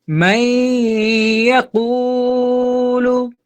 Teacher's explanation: নুনকে বাদ দিয়ে এই মিমকে ইয়ার সাথে আমরা কানেক্ট করে দিচ্ছি, মিলিয়ে দিচ্ছি, তাহলে ঈদগম হয়ে গেল। আর কি করতে হবে, এখানে আবার গুন্না করতে হবে, কারণ ইয়াটা হলো ঈদগামে বা গুন্না এর হরফ।